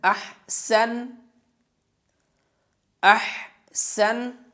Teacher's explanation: ہا کی آواز کو بھاری کر کے پڑھیں گے